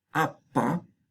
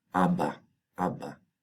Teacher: Y entonces cambiar otra vez otro sonido sonoro, la otra vocal. O sea, en vez de sonoro, sordo, sonoro, que requiere más esfuerzo, apa, pues simplemente tenemos sonoro, sonoro, sonoro · entre vocales, un sonido p puede convertirse en b. La p aquí se ha asimilado porque ha adoptado la sonoridad, vibración de las cuerdas vocales, la sonoridad de las vocales contiguas, que son sonoras.